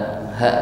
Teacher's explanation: ta marbutah di sini dibaca sebagai waqf, menjadi huruf ha